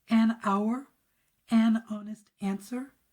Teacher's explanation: because the H in hour is silent, we're hearing the O, then it's going to be an.